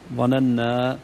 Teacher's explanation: الالف فخمت شوي نحن مطالبون بالفتح ظننا لكن من غير تفخيم